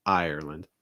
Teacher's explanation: make sure you're stressing the first syllable.